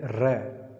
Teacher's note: र का जब हम उच्चारण करते हैं तो हल्का जिह्वा में कंपन, तरंग पैदा होती है, इसलिए इसका नाम है प्रकंपित।